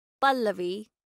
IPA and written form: ˈpəlːəʋi (pallavi)